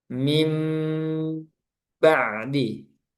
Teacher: Ketika bertemu ba jadi berubah yang asalnya nun menjadi mim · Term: suara mim